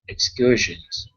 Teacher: this is excursions with the stress in the middle